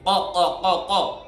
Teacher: বাংলায় রসই বয়কার বা ইবা দয়স্কার ইবাদি, কিন্তু উচ্চারণ হবে ই, আইন গলার মধ্য থেকে ইবাদি, আন্নি, আ চাপ দিয়ে, আন্নি ফাইন্নি করিব, বাংলা লিখলে করিব, কিন্তু এটা তো করিব নয়, এটা ক, গলার মধ্যখান থেকে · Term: কফের উচ্চারণ